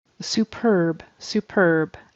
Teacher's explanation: the word superb is with the accent on the second syllable